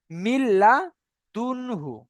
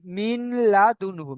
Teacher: তানবিন বা নুন সাকিনের পরে র কিংবা লাম আসলে বিনা গুণনায় জাহির করে পড়তে হয়